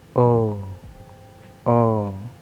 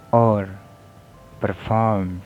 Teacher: There is mid back rounded tense vowel, and the example words are or, performed